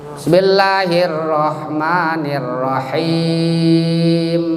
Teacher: Jadi kalau ro sebelumnya harakat kasroh namanya tarqiq ro, tipiskan rohnya.